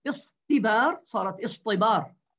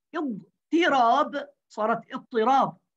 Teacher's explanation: ركزوا معي وتذكروا جيدا، الإبدال من التصريف المشترك، وقلنا إن التصريف المشترك سببه التخفيف، فإذا الإبدال الصرفي سببه التخفيف، فوقعت التاء مستفيلة، وقعت التاء مستفيلة بعد حرف الاستعلاء منفتحة بعد حرف الإطباق، هذا عسير، فأبدلوها طاء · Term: إبدال تاء افتعال طاء